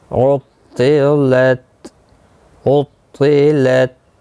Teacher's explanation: طا مستعلیہ ہے، موٹا پڑھنا ہے